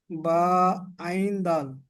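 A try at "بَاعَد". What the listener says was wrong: একটু টেনে বলুন টেনে তিন আলিফ টান আছে তিন আলিফ টানটা দেন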